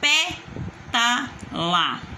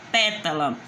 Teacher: O pé tá mais forte. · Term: proparoxítona